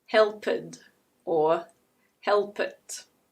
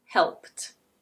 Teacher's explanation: /t/, for example, is an unvoiced consonant. /t/ /t/ So if the ending of a verb is unvoiced, the -ed is pronounced /t/, which is also unvoiced. Unvoiced goes with unvoiced. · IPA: /helpt/